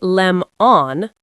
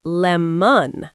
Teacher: The O becomes a schwa.